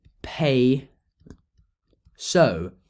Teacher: Instead, Greek says pay so, just with the sigma. So you can see that the theta has just completely dropped out. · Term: theta dropped out